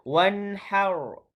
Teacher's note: ra di sini ialah ra yang tebal kerana perlu dimatikan ketika wakaf